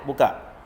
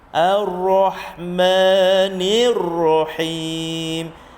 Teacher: huruf ra tebal, tafkhim. Huruf ha pula infitah.